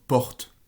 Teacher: le « re » du français est sourd devant les consonnes sourdes